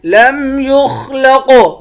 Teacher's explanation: خا اور قاف دونوں کو پر پڑھیں گے، قاف پر قلقلہ بھی کریں گے